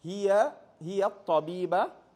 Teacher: You have to, if you put the alif and lam now, you got to join the ya straight to the ta because of the sun letter.